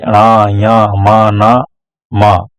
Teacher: जिन व्यंजनों के उच्चारण में हवा मुख के साथ ही नासिका या नाक से निकलती हो उन्हें नासिक या अनुनासिक व्यंजन कहते हैं